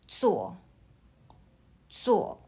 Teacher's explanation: 做 uses the fourth tone. Start high and drops your voice sharply, like you're giving a firm answer.